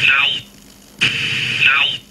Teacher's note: A diphthong with a centralized finishing point. Eh? Basically the way he says ow.